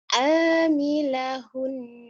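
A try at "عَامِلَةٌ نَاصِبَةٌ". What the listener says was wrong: Tun. Amilahun. Kan itu ada titiknya. Kalau ada titiknya jadi ta. Kalau nggak ada titiknya ha ya. Itu namanya tak marbutoh. Amilaton bukan amilahun. Amilatun nasibah.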